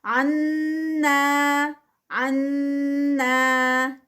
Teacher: بالکل صاف انا انا 2 کاؤنٹس کرنے ہیں but without nasal sound, not with nasal sound. · اگر وہ وائبریشن آ رہی ہے 2 کاؤنٹس پہ تو دیٹ مینس کہ وہ نیزل ساؤنڈ بن رہی ہے، تو وہاں پر 2 کاؤنٹس پہ یعنی الف مد پہ نیزل ساؤنڈ نہیں بنانی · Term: غنہ